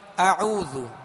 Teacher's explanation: جیسے ہم نے مشق کی اعوذ، پہلے حمزہ ہے، حمزہ کو سختی کے ساتھ ادا کریں گے اور حمزہ عین میں فرق کریں گے. حمزے کا مخرج الگ ہے ابتدائے حلق اور عین کا مخرج، وسط حلق یعنی درمیان حلق. تو اب مخرج کے تحت ان حروف کو ادا کرنے کی کوشش کیجیے اور حرکات کو بھی دراز نہ ہو، بغیر کھینچے بغیر جھٹکا دیے معروف پڑھیں گے.